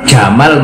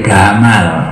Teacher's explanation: Jim kalau di Qairo itu jamal menjadi gamal.